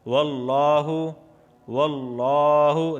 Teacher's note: لفظ اللہ سے پہلے زبر آیا ہے اس وجہ سے میں نے اسے کھینچ کے پڑھا ہے